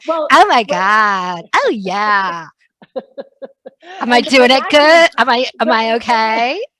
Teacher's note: up talk is this thing that we do at the end of our phrases where the intonation goes up at the end and sounds like a question